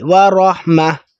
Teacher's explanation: گول تا ہوتی ہے جب وقف ہم کرتے ہیں تو اس پر ہا کی ساؤنڈ آنی چاہیے، ورحمہ۔ جب ملا کے ہم پڑھیں تب تو تا پڑھیں گے، ورحمتن ہی پڑھیں گے، لیکن جب وقف کریں گے تب ہم نے ہا کی ساؤنڈ، ورحمہ۔